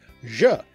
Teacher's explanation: That French /dʒ sound then continued to evolve into its current modern French sound /ʒ